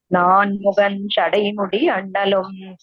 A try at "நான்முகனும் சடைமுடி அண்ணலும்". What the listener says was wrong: நான் முகனும் அந்த சேர்த்துக்கோங்க நான்